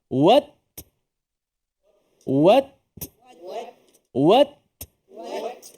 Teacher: Suara kita stop. Pada hujung lidah ni, stop pada gusi pengikat gigi atas ni. Suara kita putus kat situ. Lepas kita lepaskan lidah, baru dah ada angin tu. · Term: huruf ta